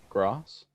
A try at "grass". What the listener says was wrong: R. Yeah, not grass. You were saying ah.